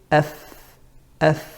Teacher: your top teeth are near the inside of the lower lip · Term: makhraj of fa